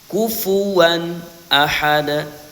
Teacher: Tanwin pada huruf wau di sini dibaca jelas tanpa gunah. Karena setelah tanwin ada huruf hamzah ya. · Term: izhar